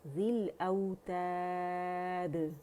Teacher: ذیل کسرہ کے ساتھ ہے تو ذی کی آواز آنی چاہیے، زے کی آواز نہیں آنی چاہیے، ذیل نہیں ہونا چاہیے، ٹھیک ہے.